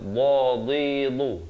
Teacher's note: Dad makhrajnya di tepi lidah.